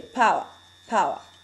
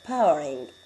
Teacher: And whether or not a speaker pronounce final ra, say power, power. But when I add the ing, I will pronounce the final ra, powering.